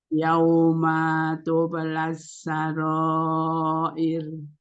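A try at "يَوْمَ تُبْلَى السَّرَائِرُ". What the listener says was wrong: Nah, di sini lagi ketemu sama qalqalah terus ya. Jadi tempo qalqalahnya kayaknya harus lebih pakem di sini ya.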